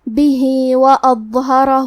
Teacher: بھی وأظہرہ، کلمت اظہرہ میں وہ ہے، وہ کی ادائیگی زبان کے سر اور اوپر والے دانتوں کے اندرونی کناروں سے ہے، وہ حروف تفخیم میں سے ہے تو ہم یہ حرف کو بھاری آواز میں پڑھیں گے کیونکہ اس پہ جزم ہے تو ہمیں وہ کو ظاہر کرنا ہے۔